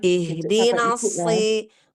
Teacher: kalau shad ini tafkhimnya dia tetap tafkhimnya tebal ya · bacalah huruf shad dengan tebal walaupun ia berada pada tingkatan tafkhim yang bawah ya